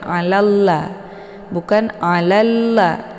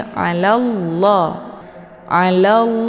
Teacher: sebelum lafzul jalalah sebelum lafaz Allah ini berharakat tebal yaitu la jadi bacanya tebal ya bukan alalla bukan alalla tapi alallah alall jadi ujung lidahnya nempel langsung di langit ya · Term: dibaca tebal